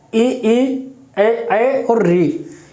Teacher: अग्रस्वर यानी कि जब हमारी जीभ का अगला भाग ऊपर लगता है, ऊपर यानी कि तालू पे जब लगता है, तो उसमें अग्रस्वर आते हैं।